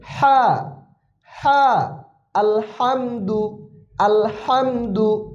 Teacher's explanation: হা খালি। হা, হা উচ্চারণ করার সময় গলার ভিতর থেকে চাপ দিয়ে উচ্চারণ হবে।